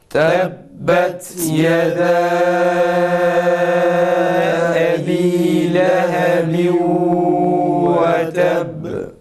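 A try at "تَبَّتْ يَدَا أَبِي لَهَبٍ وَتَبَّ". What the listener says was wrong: Ba harfinin şeddesini tam yapalım. Bir de tebbet, ta'da önce nefesi kesiyoruz. Sonra ta harfini okuyoruz ve dikkat edeceğimiz husus şudur: ta'nın sin sesine benzer bir şekilde okunmaması.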